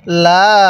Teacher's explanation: লামের মধ্যে কিন্তু আমরা তিন আলিফ টান দিব অনেকেই আমরা লামের মধ্যে এক আলিফ টান দিয়ে থাকি তাহলে লামের